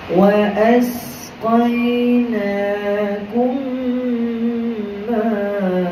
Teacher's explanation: dengung dua harakat masukkan m pertama ke dalam m kedua secara sempurna